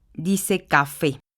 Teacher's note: Si la palabra café tiene la sílaba tónica en fe, dice café. Si la tiene en la CA, diría café en lugar de café.